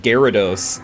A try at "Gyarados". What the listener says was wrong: No one says it Gyarados, though. No one skips the Y entirely.